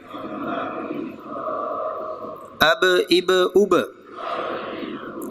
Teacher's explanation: اب اب اب، تو یہ ہل رہا ہے اس لیے کہ یہ قلقلہ ہے، حرکت دے کے پڑھا جائے گا، ہلا کے پڑھا جائے گا ، اب اب اب، جنبش دی جائے گی۔ با زبر با،